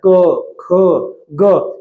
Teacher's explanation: जो क वर्ग है वो किसकी सहायता से बोला जा रहा है कंठ की सहायता से बोला जा रहा है